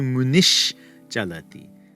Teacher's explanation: Munihi chalati, though, the sage goes, that's going to turn into munish chalati, the palatal s